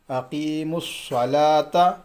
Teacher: الف بھی چھوٹ گیا، لام بھی چھوٹ گیا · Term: حروف شمسی